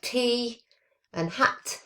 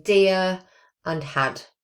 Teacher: t is the voiceless alveolar plosive and d is the voiced alveolar plosive. So they are, t is present in words like tea and hat, and the d is in dear and had.